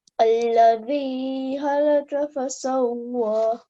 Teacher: Za has the sound of Z, but Zal has a hissing and thin sound.